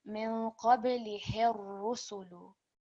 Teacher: we are putting emphasis on the ra because of the shadda, and we're also remembering to make it thick when reciting